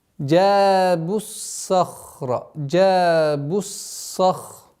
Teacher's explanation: Сад твердый, ха твердый, ра твердый. Все твердые. · Естественное удлинение аннулируется. С огласовки дамма уходим на удвоенный сад. Твердый звук.